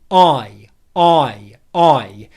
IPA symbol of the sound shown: aɪ